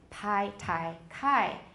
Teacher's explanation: P, T, and K, if they're the first sound of the syllable, they are definitely aspirated.